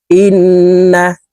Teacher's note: হামজা তাশদি নুনের সাথে নাকের বাঁশি থেকে গুন্না করে পড়বো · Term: ওয়াজিব গুন্না